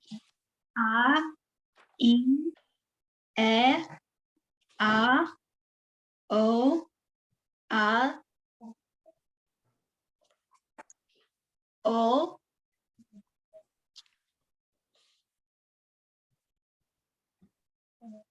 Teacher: Ein is silent so it's only the vowel